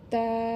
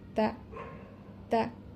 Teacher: নামটা কিন্তু একটু একালিপ টেনে বলতেছি, আর যখন ধ্বনি বলতেছি তখন কিন্তু টান হচ্ছে না, তাড়াতাড়ি বলছি, লক্ষ্য রাখবেন।